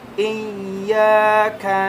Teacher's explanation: ada alif di depannya sehingga menjadi huruf mad, dipanjangkan 2 harakat ya